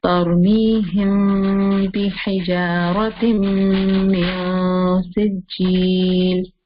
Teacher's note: Al-ikhfa al-shafawi, because it's the ikhfa of meme sakina. And when the letter ba comes after meme sakina, then we hide the sound and we do gunna